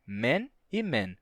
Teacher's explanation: que para os falantes de português não tem esse contraste então a gente encaixa esse a do inglês no som do e do português e diz Men e Men no singular e no plural a